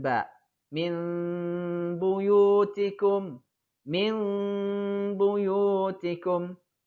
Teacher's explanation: mengubah bunyi nun mati atau tanwin ketika bertemu huruf ba dengan bunyi mirip mim mati disertai dengan dengung sepanjang dua harokat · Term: iqlab